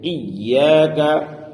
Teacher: ایاک یہاں یا پر تشدید ہے، اور تشدید والے حرف کو پڑھنے میں سختی ہوتی ہے، اس لیے یہاں سختی کے ساتھ ایاک پڑھیں گے، ایاک۔